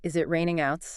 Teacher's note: rising intonation your voice goes up. That's typically used for yes no questions